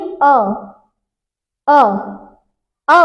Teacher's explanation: मध्य स्वर से अ, आप बोलिए अ, अ, अ, मतलब ये कहां से आ रहा है, ये आपके जीभ के मध्य हिस्से से, मध्य जगह से इसका उच्चारण हो रहा है।